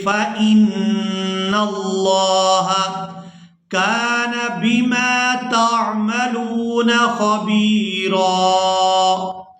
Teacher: یہاں نون مشدد پر غنہ کریں گے اور لفظ اللہ کے لام کو پورا ادا کریں گے.